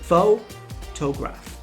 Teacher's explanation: in the word photograph, the stress is on the first syllable